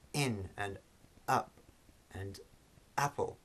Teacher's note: So for example, in English words which begin with a vowel, such as in and up and apple, okay, if you pay attention to what's happening in these words, you'll hear that just before we utter these words, just before we make these pronouncements, the airstream is completely stopped, and then suddenly the glottis relaxes and the airstream resumes